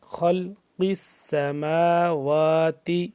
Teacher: میم کھڑا زبر ما، واو کھڑا زبر وا، ایک الف کے برابر، یہ دونوں لمبے ہو رہے ہیں